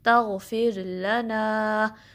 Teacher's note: لا میں آپ نے یہ دھیان رکھنا ہے کہ اس کو ہیوی نہیں پڑھنا، لا نہیں پڑھنا، زبان فلیٹ رہے گی. لا جسٹ 1 کاؤنٹ اور زبان کی نوک یوز کرنی ہے. نا کو 2 کاؤنٹ اسٹریچ کرنا ہے.